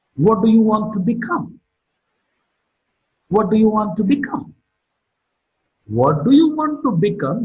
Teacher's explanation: Become is marked with a falling tone.